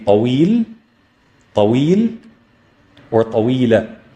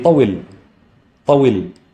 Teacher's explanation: And then we see that the waaw has a kasra. Therefore, the ya after it is going to be a long vowel sound because the waaw before it has a kasra